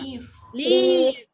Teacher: Jadi dia harus baca sebagai I-nya itu harus lebih panjang daripada yang pendek. Yang pendek itu cuman I kapital gitu aja. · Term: I panjang